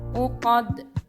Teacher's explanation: Uqad dibaca qad dengan huruf dal disukunkan serta memantul. Ini dinamakan qalqalah kubro.